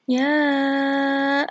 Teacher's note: madnya dibaca panjang 5 harakat disebut Mad Jaiz munfasil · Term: mat jaiz munfasil